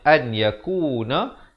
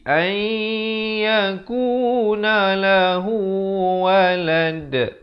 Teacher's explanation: idgham bi gunnah, nun mati bertemu ya. Asalnya an yakuna, jadi ai yakuna lahu walad.